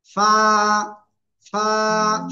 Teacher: উপরের দুই দাঁতের আগা লাগিয়ে হালকা বাতাস বের করে এক আলিফ টানে উচ্চারণ করতে হবে